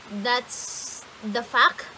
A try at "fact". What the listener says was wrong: Honey, you have to get that pronunciation right. Because it sounds like you're saying F-U-C-K. Yeah, I know that, but the way that it sounds, you said that's the fuck.